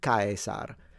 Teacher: And the difference would be that the S is a S and the R is fully trilled